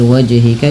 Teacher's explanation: harus memantul karena ia bacaan qalqalah